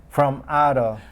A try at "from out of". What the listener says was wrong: Now, when you pronounce that M, you didn't link it because you were so focused on saying M instead of N. Hold the M. From. It's almost like there's all these M's there. From out of.